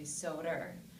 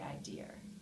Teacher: the rotization of the schwa to the schwar is also very common in the Eastern American English.